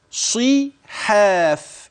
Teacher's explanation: حتى نسمع الباء وحدها والصاد وحدها والحاء والألف التي بعد الحاء ثم الفاء. تلاحظ أن الحروف ترقق عدا حرف الصاد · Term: مفخم